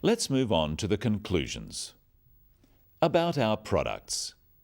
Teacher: Note the downward intonation at the end of sentences.